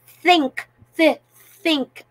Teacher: tongue between the upper teeth and the lower teeth